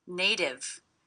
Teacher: I hear this T as a D, because again it's a T coming between two vowel sounds, will be a flat T, sounds like a D.